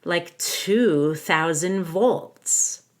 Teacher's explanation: To highlight the number 2, I actually went down on it.